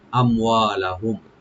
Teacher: লাহুম এখানে মিম সাকিন আমরা এজাহার করবো, এখানে গুণা হবে না।